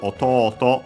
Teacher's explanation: Accented on the last syllable.